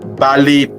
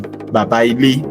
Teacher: What seems long is actually a merging of vowels due to dropped consonants.